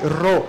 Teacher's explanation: ele é o r para ser usado com acompanhado de vogais e o seu som é sempre vibrado é sempre ro não ro Por que que por que que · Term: r vocálico